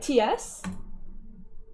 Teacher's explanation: It's a type of affricate consonant pronounced with the tip or blade of the tongue against the alveolar ridge. · It represents a voiceless alveolar affricate.